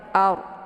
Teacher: Kemudian ard di sini ada ra sukun sebelumnya berharakat fathah. Ra sukun yang sebelumnya berharakat fathah itu dibaca tebal ya. Ard. Jadi cara bacanya itu pangkal lidahnya terangkat ke atas.